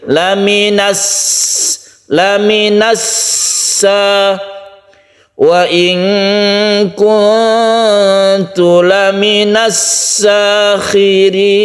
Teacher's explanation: sin itu bersifat shafir, artinya dia berdesis. Berdesir ketika dia itu menerima harokat sebelumnya, sehingga kita panjangkan karena tasydid itu menjadi sin ini double atau menjadi 2 sin.